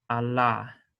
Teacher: so as i said um this is i'm going to be pronouncing it as a light l so it's not velarized